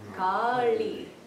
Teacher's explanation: In Sanskrit, we might say L with the tongue forward, or we might sometimes say L with the tongue farther back in the palate